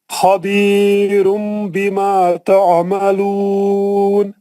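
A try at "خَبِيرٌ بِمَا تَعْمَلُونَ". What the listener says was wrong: دوبارہ پڑھے تو غنہ اچھا کرے.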